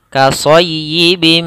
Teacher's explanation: Cara membacanya, masukkan tanwinnya ke mim, kemudian ditahan suara mimnya. Kasayyibim, tidak langsung kasayyibim mina, tapi ditahan dahulu gunnahnya. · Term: idgham bi gunnah